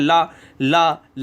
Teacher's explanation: अब देखो ल जब आप बोलोगे तो आपकी जीभ फोल्ड हो जाती है। क्योंकि जीभ का नुकीला हिस्सा ऊपर लगता है। ला ला ला और ये फोल्ड हो जाती है और इधर जो बीच में जो हवा किनारे में बचती है वो पार्श्व से हवा निकल जाती है। · ल का उच्चारण करते समय हमारी सांस जीभ के बगल पार्श्व से गुजरती है। इसलिए इसका नाम पार्श्विक हो गया। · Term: पार्श्विक व्यंजन